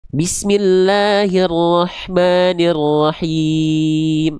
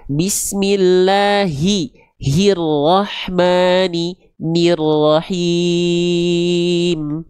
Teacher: maka dibaca jelas vokal i-nya, jangan miring-miring ke vokal e.